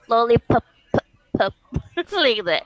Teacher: it's just the puff of your two lips together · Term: letter p